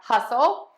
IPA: ˈhʌsəl